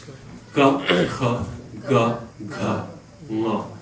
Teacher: those are kantyas, or pronounced in the throat, gutturals. Ga, kha, ga, gha, nga, all in the back.